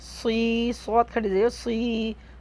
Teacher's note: صاد کو منہ بھر کے پڑھیں گے